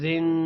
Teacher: اب را کے نیچے دو زیر ہے دو زیر کی وجہ سے را موٹا نہیں ہوگا